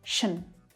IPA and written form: ʃən (-TION)